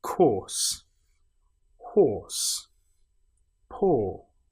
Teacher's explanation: when we have ER, OR, IR, whatever it is at the end of the word, we don't create this R sound. We just make the sound.